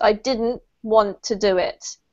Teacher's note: you can miss out the real strong t sound so you can go nicely into the next word